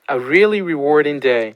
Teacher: this person has a downstepped high boundary tone at the end of this one.